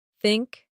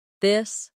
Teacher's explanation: For think, it's soft. For this, it's voiced.